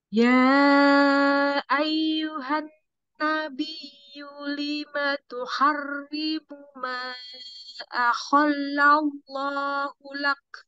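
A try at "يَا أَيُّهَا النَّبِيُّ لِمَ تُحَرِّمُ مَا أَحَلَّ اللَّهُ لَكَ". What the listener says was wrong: Hanya tipis nun, terus nun tasdidnya tahan. Ya ayyuhan nabiyyu lima tuharrimu ma ahallahu.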